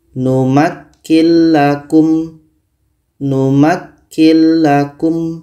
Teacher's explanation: ada nun mati bertemu lam lam adalah huruf idgham Bila Ghunnah maka nun mati ini kita masukkan ke la dan tidak boleh dengung